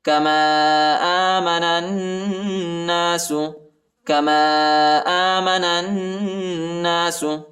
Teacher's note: الف پر جو ہے چھوٹا مد آیا ہے، اس کو تقریباً 2-3 سیکنڈ تک کھینچنا ہے اور نون کو نون کے ساتھ ملانا ہے